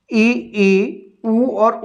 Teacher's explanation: ई ई उ और उ में लगभग लगभग मुख द्वार बंद रहता है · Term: समृत